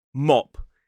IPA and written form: mɒp (mop)